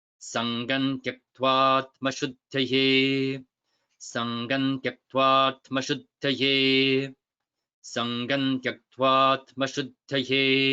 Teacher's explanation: That symbol shows that that long a at the beginning of atmashuddhaye has been elided, it has been lost.